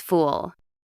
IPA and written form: fuːl (fool)